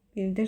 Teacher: Bildir sözü feil olanda vurğu düşür 2-ci hecaya.